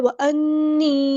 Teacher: نون پہ یہاں پہ غنہ زمانی ہو رہا ہے، نون تشدید والا ہے